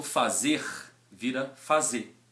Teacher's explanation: esse R, em verbos no infinitivo ou no final de uma palavra, de um substantivo, por exemplo, ele também fica enfraquecido e muitas vezes ele some. Então, por exemplo, o verbo fazer vira fazer.